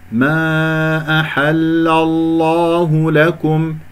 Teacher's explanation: لأنه هنا اللام مع اللام، لام قمرية، عفوا، لام مرققة ولام مفخمة من الله، فانتبهوا لأنها مفتوحة، فسأفخم اللام من اسم الجلال الله، فأقول خطأ ما أحل الله، أو حتى أقول أحل، أفخم الحاء، فانتبهوا، الله يبارك فيكم، اللام مرققة من كلمة أحل، واللام من اسم الجلال المفخم